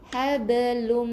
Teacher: huruf ba adalah huruf b tambah i untuk qalqalah yang kecil di sini